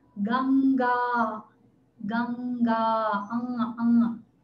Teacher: мы произносим «ангу» звук заднеязычный, прижимая корень языка к небу.